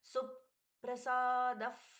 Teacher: सु पर प का सुंदर आघात है डबल प जैसे हम बोलते हैं एक बार सु के साथ में एक बार प्रसाद सु प्रसा